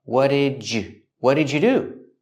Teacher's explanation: for the D linking to the Y and U, you can make a J sound like in juice and jump